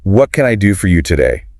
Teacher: The postal clerk asks, what can I do for you today? With that downward inflection at the end because it's a what question.